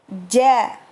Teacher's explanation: Huruf jim sama dengan huruf shin yang satu makhraj, yaitu tengah lidah menyentuh pada bagian langit-langit atas, diangkat ke langit-langit atas ya. Untuk huruf jim, cara penyebutannya, cara mengucapkannya dengan tidak mengeluarkan udara.